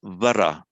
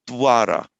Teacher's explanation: if you put a consonant before, like a D, it has much more of a w sound